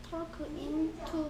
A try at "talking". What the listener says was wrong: L이 소리 안 난다 했어. Talking. 그리고 A는 O 소리 나. Talking.